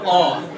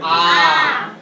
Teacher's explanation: ह्रस्व स्वर से इसमें 2 गुना समय लगता है। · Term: दीर्घ स्वर